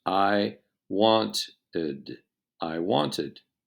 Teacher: when ed is added to verbs that end in t pronounce the last syllable separately